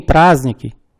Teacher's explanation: temos a sequência de consoantes ZDN, não se pronuncia D